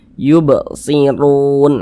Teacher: Ini harokat dhammah namanya nih. Maka huruf ra dibaca tebal, dibaca tafkhim. Pangkal lisan kita tuh naik terangkat ke atas. Nah, ketika kita mengucapkan huruf ra-nya ini ditebalkan.